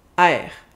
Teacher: to do what we call a dong in linguistics it's I the vowel starts more open and it will get a bit a bit smaller we change the sound as we pronounce it it's less stable a that's the only difference the rest is